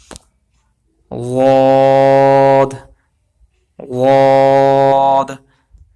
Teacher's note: زبان کا کنارہ جو ہے لیفٹ سائیڈ کی جو داڑیں ہیں وہاں پر زبان کا کنارہ لگ رہا ہے، تو یہاں سے غاد ادا ہوگا۔